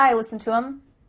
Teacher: The word them has the TH cut out